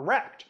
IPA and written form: ɹɛkt (wrecked)